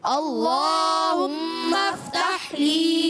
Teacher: یہ اس میں جلالت اللہ پاک کا لام ہے، تو اس سے پہلے زبر بھی ہے، تو اس کو موٹا پڑھنا ہے۔